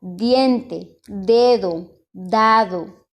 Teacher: El fonema es D y el punto de articulación es dental